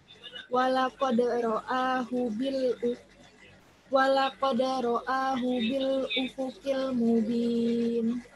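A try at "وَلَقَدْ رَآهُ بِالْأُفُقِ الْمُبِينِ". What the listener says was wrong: Kurang panjang. Mubin. 4, hitung.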